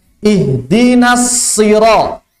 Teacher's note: Langsung masuk ke shod. Jangan dipanjangkan nunnya.